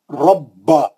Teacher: با کو سختی سے پڑھیں گے, تشدید ہے, دو با ہے اس میں